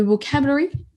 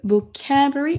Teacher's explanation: Le début, on l'entend à peine. La fin aussi. Et le milieu, vocabulary, il ressort beaucoup plus.